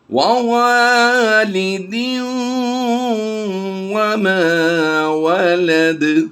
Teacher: تنوین کی نون کو ہم نے اس واو میں ضم کر دینا ہے